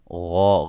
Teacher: غا غین کو موٹا، مد اصلی